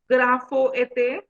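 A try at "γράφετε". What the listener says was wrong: graphete. So you remove omega. Graphete. See, you remove completely omega.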